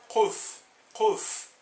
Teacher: a gente constrói mais no fundo da boca